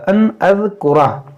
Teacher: یہاں پر نون ساکن کے بعد حمزہ یہاں پر اظہار ہوگا